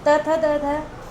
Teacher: फिर त थ द ध, ये दंत बोले जाएंगे, क्योंकि इनको जब बोलते हैं तो दांत का जीवा के अग्र सिरे से स्पर्श होता है, दांतों को स्पर्श करती है हमारी जीभ